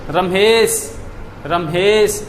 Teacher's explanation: ए स्वर का उच्चारण में हमने कितना समय लिया है, 3 मात्रा का समय लिया है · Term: प्लुत